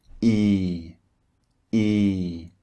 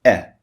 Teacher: the first one is long and the second one is short